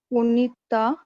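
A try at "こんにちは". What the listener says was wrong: नहीं नहीं नहीं, ता के रो में है ये लेटर. It's not ता. अब ये जो हा है उसका प्रोनाउंसिएशन यहाँ पर वा होगा. लिखते वक्त हा लिखेंगे, प्रोनाउंस करते वक्त वा. तो ये होगा कोन्निचिवा. हाँ, तो ये होगा कोन्निचिवा.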